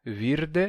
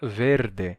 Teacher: E aí você tiraria o M do final, virdem, virde, e esse I ele se abre, é um I breve, ele se abre para E, então virde se torna verde.